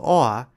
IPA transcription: oa